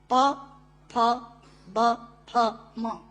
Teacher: दोनों होंठ मिलाकर बोले जा सकते हैं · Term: ओष्ठांग